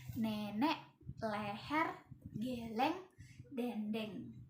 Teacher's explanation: Nah, posisi mulutnya itu semi terbuka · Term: vokal e